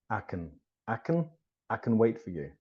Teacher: Even I isn't pronounced I, it's pronounced ah.